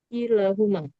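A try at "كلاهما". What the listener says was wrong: kilahuma la-nya panjang. Kilahuma.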